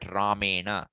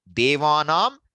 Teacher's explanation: one is cerebral and one is you know Dental the place of pronunciation the change will happen when raw or come in place okay